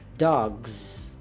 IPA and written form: dɔɡz (Dog's)